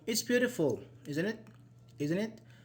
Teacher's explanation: when you just State our opinions and we do not expect a response we make it fall like falling intonation